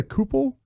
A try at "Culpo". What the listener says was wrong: I think you got to pronounce the L in there.